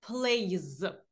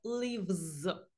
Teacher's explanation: тому ми S вимовляємо як з